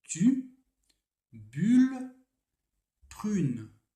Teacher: L'angle, c'est-à-dire la mâchoire, c'est ça, est très fermé et les lèvres sont en avant